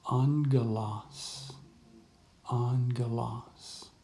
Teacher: So one other thing to point out is that we have a gamma together here. And when a gamma comes together, it makes an NG sound